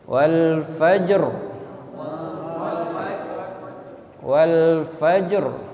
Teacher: Jadi kalau yang membaca al-fajr, ro-nya harus tafkhim